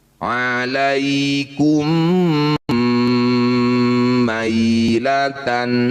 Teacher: Bunyi mim pertama masukkan pada mim kedua kemudian dengungkan dua harakat. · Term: idgham mimi